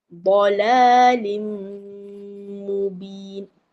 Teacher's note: Dia terus masuk ke mim bersama dengan dengung. Jadi dengung tu kena masuk ke hidung lah.